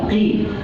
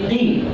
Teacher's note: Nah, bukan ki. Kalau ki huruf kaf. Ini qi. Pangkal lidah ke langit-langit.